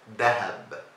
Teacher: In Egyptian Arabic, we say dahab with a D sound.